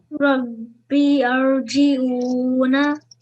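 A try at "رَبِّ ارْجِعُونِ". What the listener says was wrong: No, this alif is blank, so we don't pronounce this alif. And you can see here that alif, blank alif is before the Rosakin, and that's why we have a thick Ra.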